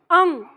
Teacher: ठीक है, ये ओ और ये आओ, ये अंग, अंग नहीं, पूरा ग नहीं आएगा, नाक में ही रहनी चाहिए, उससे बाहर नहीं, अंग। ठीक है, और ये आह, इसमें नाभि का प्रयोग होगा।